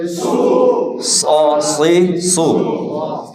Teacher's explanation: সদ সিন এবং ঝা এই তিনটি হরফ একই জায়গা থেকে উচ্চারিত হয় বাকি সদটা মোটা হয়